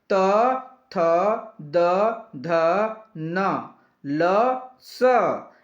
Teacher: त थ द ध न ल स ये दंत ध्वनि होते हैं